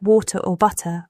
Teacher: T flapping. In American English, the T in words like water or butter often sounds like a soft D.